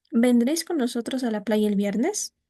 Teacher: Cuando estamos una oración, una pregunta sin pronombre, vendréis con nosotros a la playa el viernes? Como no tiene pronombre, el tono al final es ascendente.